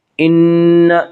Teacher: نون مشدد غنہ ہوگا، غنہ کی مقدار 1 الف ہے